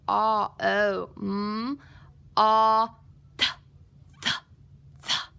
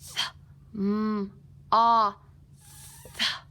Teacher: I feel that tongue between my bottom and front teeth.